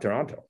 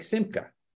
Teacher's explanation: an unaccentuated O in Russian is A